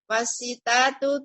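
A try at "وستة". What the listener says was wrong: tanya ada tasydidnya. Wasittatu.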